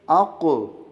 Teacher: اپنی جگہ سے ہلا کے پڑھ رہے ہیں کیونکہ قاف ساکن آ رہا ہے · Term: قلقلہ